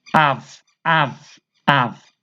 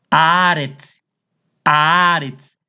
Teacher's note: A primeira sílaba, que é a, Ela é pronunciada com mais intensidade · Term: sílaba tônica